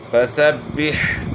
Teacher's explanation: ہا کی آواز گلے کے درمیان سے نکلے گی